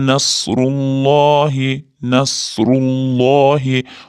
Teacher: Alloh lafzi zammadan keyin kelayotgani uchun Allohi bo'lib yo'g'on, ya'ni oyga o'qilyapti.